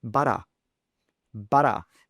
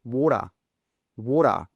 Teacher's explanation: in an Australian accent, we would say butter. Butter. That T sound changes to a D.